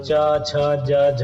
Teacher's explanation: च छ ज झ ये सारे तालु से बोले जाते हैं।